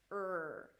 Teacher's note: r now in arabic the r is drilled in comparison to american english where the tongue pulls back for the r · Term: american r